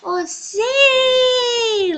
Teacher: Vemos que é o si. A sílaba mais forte. Ela foi pronunciada de uma maneira mais forte. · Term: sílaba tônica